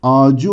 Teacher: Yine ağaç kelimesine ı ekini getirirsek ağacı olur. Görmüş olduğunuz gibi Ç sesi yumuşayarak C'ye dönüşmüştür. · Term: ünsüz yumuşaması